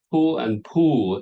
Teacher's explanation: the long and short vowel are the same, just pull